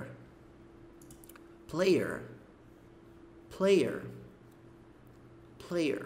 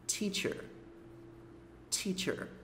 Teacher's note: quando você tem o r lá na última sílaba mais lá no final que esse biquinho acontece